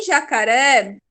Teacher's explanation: Em jacaré, o mais forte é o ré, tá até acentuado, né? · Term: oxítona